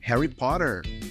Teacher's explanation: Mais pro sul, Harry Potter é mais nasal e tem mais R